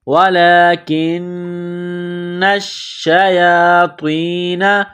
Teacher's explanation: سلیمان ولکن الشیاطین، لام کے اوپر کڑا زبر ہے، ایک الف کے لمٹ میں کھینچنا ہے، کاف کو نون کے ساتھ ملانا ہے، کاف کو باریک کرنا ہے، نون مشدد ہے، غنہ کریں گے، آواز ناک میں چھپائیں گے۔ وَلَكِنَّ الشَّيَاطِينَ، نون کو شین کے ساتھ ملائیں گے، نون کے اوپر تشدید ہے، شین کے اوپر تشدید ہے، تو نون اور شین میں سختی کریں گے، دبائیں گے۔